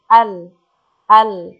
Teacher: inhiraf lam cenderungnya suara lam ke arah dua sisi atau tepi lidah. Dikarenakan terhalangnya suara yang keluar, al, ya, suara tidak ada keluar, oleh posisi ujung lidah yang melengkung, al, ke atas, menempel ke langit-langit bawah.